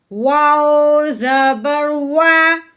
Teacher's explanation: یہ عربی کا واؤ ہے، ہم نے اس کو ہونٹوں کو گول کر کے پڑھنا ہے